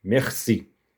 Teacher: Já um R gutural. Significa que esse som deve ser produzido da garganta.